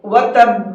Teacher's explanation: اور با کو ڈبل پڑھنا ہے۔ جب آپ با کو پڑھیں تو تھوڑا سا رک جائیں، ایٹومیٹک آپ کا یہ ڈبل ہو جائے گا، وتب، اس طرح سے۔